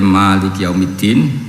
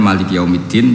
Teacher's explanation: Maliki yawmiddin yang dibaca dengan vokal panjang, dan sekali dalam gaya lain, Maliki yawmiddin tanpa vokal panjang